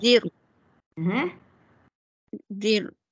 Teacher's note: Sekarang sebelum ra mati baris bawah. Makanya menipiskan ra.